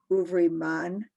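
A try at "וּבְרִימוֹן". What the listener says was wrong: No, okay. There's no R.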